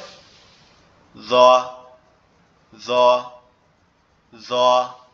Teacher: এই জিহ্বার আগাটা সামনের উপরের দুই দাঁতের আগার সঙ্গে লাগবে